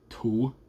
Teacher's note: Something that I've noticed but not too many people talk about is the breathiness of saying to.